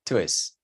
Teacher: El tú se pierde, se cancela.